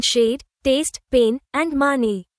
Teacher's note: specifically the long A sound, A, which is actually a diphthong, two vowel sounds gliding together